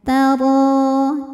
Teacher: Karena ada harokat fathah panjang pada huruf ra, maka ro panjangnya 2 harokat saja. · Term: mad tobi'i muqaddar